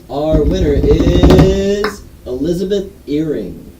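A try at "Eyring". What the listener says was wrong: It's not an earring, it's an eye ring.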